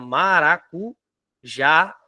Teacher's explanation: a mais forte é o já então a palavra maracu já a sílaba tônica da palavra maracujá é o já é a última